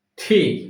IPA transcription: tiː